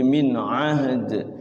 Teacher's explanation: Jadi haknya disukunkan, dalnya dikolkolahkan.